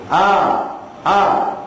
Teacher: Sebab sifat huruf, makhraj huruf Ain bukan di dalam, tapi di pangkal kerongkong tu. A, A. Masa nak sebut A tu, kena sengih.